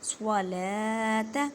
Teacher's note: نون کو صاد کے ساتھ ملائیں، الف اور لام ان کو نہیں پڑھنا کیونکہ ان کے پر کوئی حرکت نہیں ہے۔ صاد، स्वाद को अदा करते वक्त ख्याल रखें कि सीन की आवाज़ ना आए क्योंकि ये हरूफ मोटे हरूफ में से है।